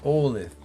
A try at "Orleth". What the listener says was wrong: I'm Orleth. Orleth. Ending in a TH.